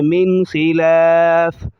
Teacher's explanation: اور اسی طرح خا کو موٹا کریں گے، اور یہاں پر غنہ نہیں ہو رہا، ناک میں آواز نہیں لے جا رہے